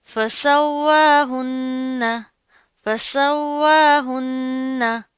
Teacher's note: वाव पर क्या है, खड़ा जबर आ रहा है, तशदीद है, मजबूती से जमा कर पढ़ेंगे, और वाव के अदायगी करते हुए होंठों को मुकम्मल गोल करेंगे। ठीक है, नून के ऊपर फिर तशदीद आ रही है, तो यहाँ पर क्या करेंगे, गुन्ना करेंगे।